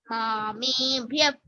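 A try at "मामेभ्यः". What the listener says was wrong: மாமேப்யः. There should be a f sound.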